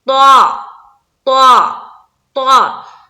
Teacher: یہ جو طا ہے اس کو ہم منہ بھر کر بولیں گے · طا طا طا، منہ بھر کر بولیں گے، گول کر کے بولیں گے، جس طرح سے ہم بولتے ہیں نا قاف خا، اسی طرح سے طا، اسی طرح سے صاد۔ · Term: موٹے حروف